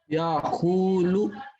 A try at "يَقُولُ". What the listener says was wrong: نہیں غلط، یا قولو نہیں، یقولو،